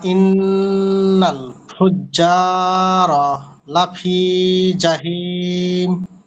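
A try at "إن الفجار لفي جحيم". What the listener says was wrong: মাশাআল্লাহ, ঠিক আছে।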